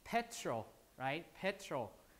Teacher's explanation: So T is not aspirated, right?